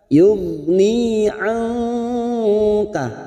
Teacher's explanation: nun sukun bertemu kaf, ikhfa hakiki